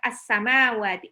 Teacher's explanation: Alif lam di sini ada alif lam syamsiah. Alif lamnya tidak dibaca, langsung lebur ke sin. Sinnya tasdid.